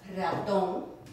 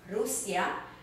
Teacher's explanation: You take the word Rusia, Russia, Rusia, the restaurante, restaurant, rosa, rose. You hear that rolling sound at the beginning?